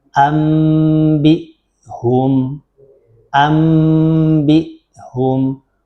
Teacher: bunyinya nun matinya itu tidak dibaca berubah menjadi bunyi mim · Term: iqlab